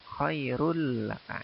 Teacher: Jadi bukan khairun laka, tapi run tanwinnya dihilangkan dimasukkan ke suara lam